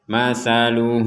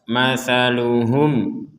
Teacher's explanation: di sini ada mim sukun bertemu dengan Kaf maka ini kita baca jelas jangan kita baca dengung